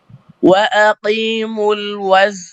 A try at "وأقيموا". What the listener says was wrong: কফকে আরো পাতলা করবেন, হ্যাঁ, কফকে আরো পাতলা করবেন। যখন কফের যখন কাসরা হয় তখন কফ মোটা হয় না। ওয়াকিমুল, ওয়াকিমুল, ওয়াকি এরকম মোটা করা যাবে না কফকে।